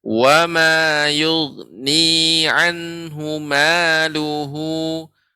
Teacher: Wamanya nggak boleh panjang. Nggak boleh panjang berlebih. 2 harokat saja. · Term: mad tabi'i